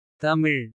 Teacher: நாக்கு உள்நோக்கி வளைந்து மேல் அன்னத்தை நெருங்குவதால் பிறக்கும்